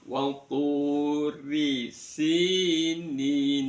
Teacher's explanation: Wal turi, rinya di kasrah dibaca, ro dibaca tarqiq. Wal turi, rinya di ujung lidah sambil direngges sedikit ya.